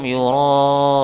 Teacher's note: Yura'un dinamakan mad wajib muttasil. Mad yang dibaca panjang, sepanjang 4 harokat atau 5 harokat, ya. Jadi selama 4 ketukan, ya, atau 5 ketukan boleh.